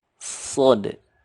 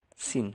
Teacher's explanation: Sod atau SH. Membedakan dengan sin adalah kalau sod itu lebih menggema di mulutnya. Kalau sin ini kan tipis sin.